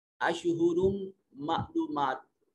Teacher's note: अशहुरुम मालूमात, रा के ऊपर तनवीन है और उसके बाद मीम हुरूफ यरबलून में से, नून तनवीन के बाद हुरूफ यरबलून में से मीम है, इदगाम बिलगुन्ना होगा, और मीम मुशद्दद है तब भी इदगाम और गुन्ना वाजिब होगा।